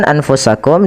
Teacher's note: Nah, seperti kemudian berfal anfusakum min diarikum pada lafal anfusakum bacaan anfusakum di sini ada huruf nun yang ia tidak berharakat maka kita hukumi dengan nun sukun kemudian bertemu setelahnya huruf fa maka suara nunnya disamarkan kepada huruf fa